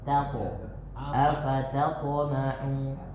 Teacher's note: Taknya tipis, poknya tebal.